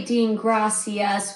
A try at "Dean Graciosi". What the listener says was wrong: No, you were pronouncing it gracias, but it's Graciosi.